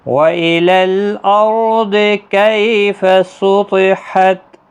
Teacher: را ساکن سے پہلے زبر، اس لیے موٹا پڑھا جائے گا را، ضاد بھی حروف مستعلیہ ہے، پر پڑھا جائے گا، کئی یا لین ہے، تو حروف مستعلیہ ہے، پر پڑھا جائے گا، تا ساکن ہی رہے گا وقف کی صورت میں۔